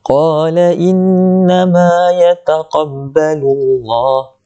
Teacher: Ma, mim, lepas tu ada huruf mad iaitu alif lepasnya, jadi mad asli, kita kena panjang 2 harakat